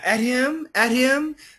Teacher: she does do kind of a D sound, but she also does keep the the H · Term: flap